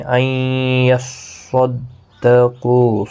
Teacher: صاد مستعلیہ ہے، پر پڑھا جائے گا، قاف بھی پر پڑھا جائے گا، قوہ مدہ ہے، ایک الف کی مقدار کے برابر کھینچ کر وقف کریں گے۔